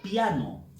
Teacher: la vocal que lleva un poquito de más fuerza de voz es la vocal abierta